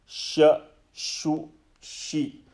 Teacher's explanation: They are pronounced from the exact same place, center of the tongue.